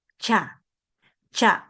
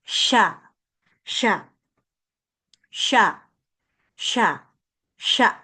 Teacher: Sha está flotando. No se pega para nada y tu lengua está suspendida.